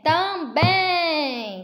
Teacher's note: Também, se divide também, também, certo? Então, a sílaba mais forte é o bem